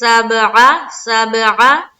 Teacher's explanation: عین کو ہم حلق سے نکالیں گے